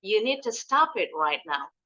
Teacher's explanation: huruf d dengan t mirip jadi bunyinya kalau disambung unit unit d-nya enggak enggak terlalu dibunyikan jelas bunyinya dijelasinnya di t you need to stop it right now